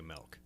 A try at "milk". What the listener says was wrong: They're like, it's M-I-L-K, not M-E-L-K.